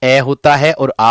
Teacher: अ होता है और आ होता है जो कंठ से बोले जाते हैं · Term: कंठी स्वर